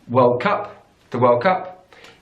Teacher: in British English we put the stress on the second word